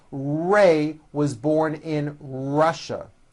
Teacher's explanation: Notice how my lips come forward on all my R's and W's.